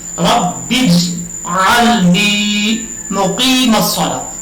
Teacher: کلکلا ضرور ہے لیکن اتنا بھی کلکلا نہیں ہے کہ جیم کے اوپر زبر پڑی جائے. جیسے دعا جو نماز میں ہم پڑھتے ہیں رب اجعلنی، تو اکثر لوگ اس کو پڑھ جاتے ہیں رب اجعلنی، بجعلنی.